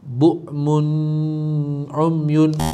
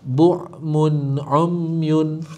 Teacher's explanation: Jadi kita rujuk balik pada jari kita, apa yang warna biru adalah izhar halqi. Kena jelaskan nun tanpa dengung.